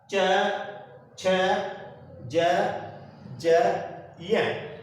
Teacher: जीवा का जो मध्य भाग है वो कहीं ना कहीं जाकर के तलवे को स्पर्श करता है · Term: तालव्य स्पर्श व्यंजन